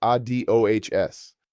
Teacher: The stress falls on the final syllable.